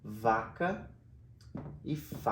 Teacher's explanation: a única coisa que muda nesses dois sons é a prega vocal o ponto articulatório ao mesmo então Eu amo esses dois sons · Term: pares mínimos